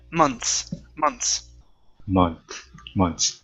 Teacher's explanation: If it is singular, then yes, we do say month, and we pronounce the TH. But if it's plural, we take out the TH, and we only pronounce the S sound at the end. Okay, no need to pronounce the TH.